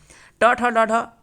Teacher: ट ठ ड ढ यह आपको पता है कि मूर्धन्य ध्वनि है।